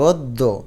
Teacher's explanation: অর্থাৎ অ টা একটু ওর মত উচ্চারণ হয়। তার মানে অ কে ও দিবে এবং দফলাকে দুইবার উচ্চারণ করবে অদ্য। এখানে যদি হসন্ত না দাও দ এর নিচে তাহলে উচ্চারণ হবে অদদ।